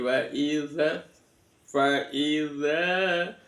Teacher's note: huruf zalnya di ujung lidah nempel di dua gigi